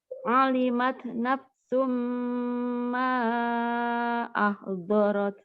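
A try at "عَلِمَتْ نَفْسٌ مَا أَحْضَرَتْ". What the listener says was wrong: Coba jangan nafsun. Huruf fa. Naf. Itu coba fa. U.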